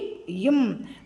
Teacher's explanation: மேலுதடும் கீழுதடும் பொருந்துவதால் இவ் எழுத்துக்கள் பிறக்கின்றது